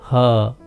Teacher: इनका उच्चारण प्रमुख रूप से गले के द्वार द्वारा किया जाता है। इसमें हवा बंद गले को खोलकर झटके से निकल पड़ती है तथा स्वरों की ही तरह बिना किसी अवरोध के उच्चारित होती है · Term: काकल्य व्यंजन